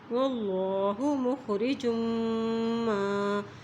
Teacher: اللہ کے نام سے پہلے زبر آ گیا ہے تو اس لیے اللہ کا نام موٹا ادا کیا جائے گا